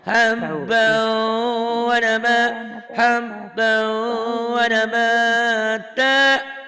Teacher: bukan berarti wanya harus panjang. Yang panjang habaunya, idgomnya, wanya pendek. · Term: idgham biguna